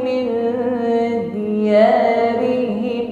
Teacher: nun sukun bertemu dal, samarkan mengucapkan min, siapkan pada makhraj huruf dal. Saat proses menyamarkan diiringi dengan bunyi dengung.